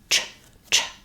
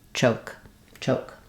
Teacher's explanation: you don't have any c sound or sh sound but rather the tongue starts up behind the teeth drops down to the sh position ch ch for letter CH and then O and C choke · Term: CH sound, ch sound